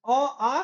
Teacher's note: अ आ कंठ से बोला जाता है